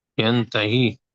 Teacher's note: We're gonna make a ghunna. So we're gonna stretch the sound of the noon itself.